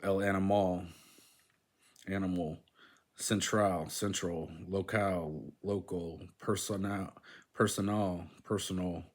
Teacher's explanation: In Spanish, words that end in al are stressed at the last syllable